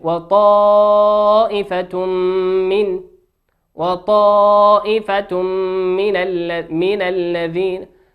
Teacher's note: تنوين في كلمة طائفة وأتى بعده حرف الميم في كلمة من والميم من حروف الإدغام بغنة يغن بمقدار حركتين